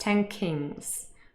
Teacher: But something really changes when we say this fast, 10 kings. There's no contact anymore because the nasal n changes into ng.